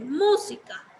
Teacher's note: de música, la sílaba más fuerte es mu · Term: palabra esdrújula